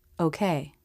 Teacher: The lips begin to round for the transition into the ending position. The lips round, but not quite as much as for the stressed O in slow.